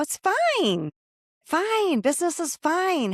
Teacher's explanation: our voice goes up a notch or two and we go, it's fine.